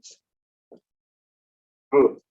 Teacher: Stop is the manner. The location is bilabial